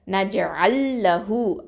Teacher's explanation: அதாவது நஜ்அல் அப்படிங்கிற உள்ள லாமை வந்து லாம் சுக்குனை வந்து நம்ம உச்சரிக்காமல் லாம் ஷத்தால் இணைச்சிருவோம் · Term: இதுகாம்